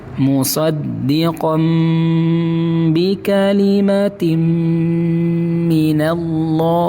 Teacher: Tanwinnya garis yang kedua itu diganti dengan mim. Tulisannya musdiqon tapi dibaca musdiqom. Bibirnya dirapatkan. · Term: iqlab